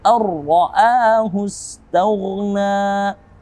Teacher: Huruf ra, jika sebelumnya nun sukun atau tanwin, dia tidak mendengung seperti hukum nun sukun dan tanwin, yaitu idgham bi ghunnah. Namun ketika bertemu dengan ra, di sini ada idgham bila ghunnah. Tanpa ghunnah.